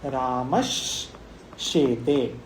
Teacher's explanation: दंत्य स जो है सकार के वो तालव्य शकार हो जाता है।